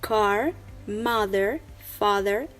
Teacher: American accent uses the rhotic, that means that R is pronounced at the end of the words, like car, mother, father, etc.